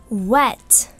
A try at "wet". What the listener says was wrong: И «т» тоже громкое. Не wet, а wet. Т-т-т. Оно так лучше звучит.